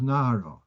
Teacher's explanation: And Nar with a Hey becomes Nara. You don't hear the H sound.